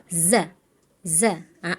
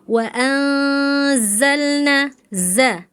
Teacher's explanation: Jadi zai itu kan punya sifatnya sofir ya, ada desisnya. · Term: huruf zai